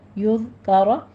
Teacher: ذال کے اوپر نرمی سے پڑھنا ہے، سیٹی کی آواز نہیں آنی چاہیے